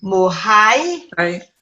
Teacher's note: Tuig is a house. With lenition, you miss out the T and you go mo high and mo hui.